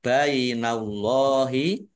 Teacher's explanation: tasdidnya qof dah wau sukun Mad thii panjang dua harakat ballahi Allahnya dibaca tebal karena harakat di depannya fathah